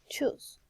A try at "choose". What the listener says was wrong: No, you read that as choice. This is the correct choose.